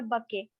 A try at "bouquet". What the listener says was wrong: Bouquet. Hello, फिर bucket बोल रहे हो. The word is bouquet, and bouquet is a French word. In French, the last consonant is always silent. Bouquet.